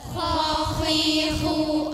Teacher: Posisi lidah dari tenggorokan yang atas dengan udara yang keruh dan suaranya kasar atau tebal.